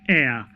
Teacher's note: in that word, H is silent. It's silent, so it is pronounced as heir. So it begins with a vowel sound, even though the first letter in that word is H, which is a consonant.